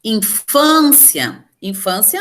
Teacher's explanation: infância a penúltima sílaba tônica · penúltima sílaba tônica. Então, ela vai ser uma paroxítona